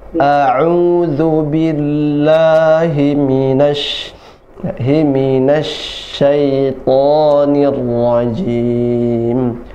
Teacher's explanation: yang kedua ain, U dari tengah tenggorokan, A'u, A dari pangkal tenggorokan, A'udzu billahi minasyaitonir rajim. · A, U, A yang pertama, yang kedua ain, U dari tengah tenggorokan, A'u, A dari pangkal tenggorokan